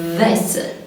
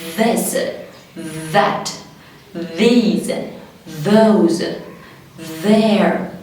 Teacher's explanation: حته من لساني بحطها تحت سناني اللي فوق او ما بين سناني اللي فوق واللي تحت عادي. طيب واكون مخليه بالي وانا بعمل الساوند يعمل فايبريتنج، يعمل رعشه في الفوكال كوردز بتاعتي · تعالى نروح بقى على ال TH وهي voiced يعني منطوقة قوية hard.